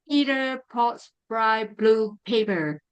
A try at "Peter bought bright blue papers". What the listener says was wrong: Yeah, watch the bought. So bought, Peter bought bright blue papers.